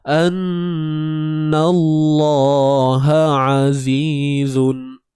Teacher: Na kekal nipis lagi, masuk pada lam tu baru tebal. Jangan anna nallah annallaha azizun. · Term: taghlidh